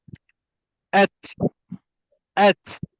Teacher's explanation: bila kita sebut huruf ta tu, angin mesti keluar daripada mulut kita. At, at. Dengar tak bunyi angin tu? · huruf ta ni adalah antara huruf yang suara tertahan tetapi nafas dia terlepas. Maknanya bila kita sebut huruf ta tu, angin mesti keluar daripada mulut kita. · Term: Nafas terlepas, nafas terlepas